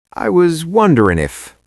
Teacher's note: Notice I dropped the G, wonderin'.